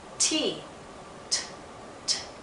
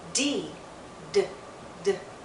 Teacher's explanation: T, t, t, is voiceless. D, d, d, is voiced.